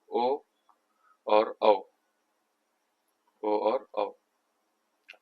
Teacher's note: कंठ ओष्ठ से होते हैं ओ और औ